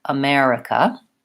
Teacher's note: it is stressed on the second syllable it is short long short short